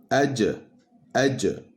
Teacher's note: Donc pour le shin et le ya, le milieu de la langue se rapproche du palais dur, mais ne le touche pas, à la différence du jim. Alors que pour le jim, le milieu de la langue est au contact du milieu du palais dur.